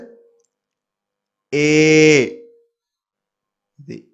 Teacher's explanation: ஏ கிடையாது, ஏ நெடில்ல நீங்க உச்சரிக்கணும்.